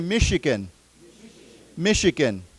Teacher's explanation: the CH is not ch, it's a sh sound.